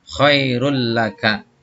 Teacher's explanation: maka membacanya nun mati atau tanwin dimasukkan kepada huruf yang dua ini, lam dan ro itu, namun tidak disertai dengung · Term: idgham bilahunna